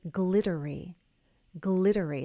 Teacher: Notice the double T is going to flap. It will sound like the letter D. D. So in your mind, change those two T's to a D and say glittery. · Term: flap T